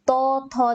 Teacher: জিভটা কোথায় ঠেকছে? দাঁতে ঠেকছে, তার মানে এগুলো হচ্ছে দন্ত বর্গ। ঠিক আছে, দন্ত বর্ণ, তার মানে ত বর্গের উদাহরণগুলো হচ্ছে তোমাদের দন্ত বর্ণ।